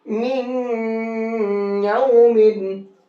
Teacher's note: ठीक है, तो अब इस नून को या में मिक्स कर देंगे, नून नहीं पढ़ा जाएगा। ठीक, अब इस नून की जगह या के अंदर गुन्ना करके पढ़ेंगे